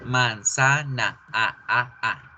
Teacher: Las tres A's suenan igualito en todas las partes de la palabra.